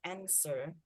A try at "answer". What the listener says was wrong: The W is silent. Don't say the W.